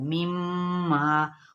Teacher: नाक में थोड़ी देर आवाज़ को ठहराना है, और इसमें अलिफ मद्दा भी हो रही है, इसको एक अलिफ के लाजमी खींचना है, एक अलिफ के बराबर या फिर दो हरकत के बराबर। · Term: गुन्ना